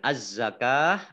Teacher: Kemudian az-zakah alif lamnya alif lam syamsiyah tidak dibaca, langsung masuk ke huruf berikutnya yaitu za, ditandai dengan ada tasdidnya.